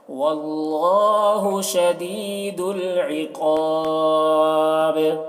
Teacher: شدید العقاب، قاف کو پر پڑھیں گے، قاف حروف مستعلیہ میں سے ہے اور یہاں پر وقف کریں گے تو با میں قلقلہ ہوگا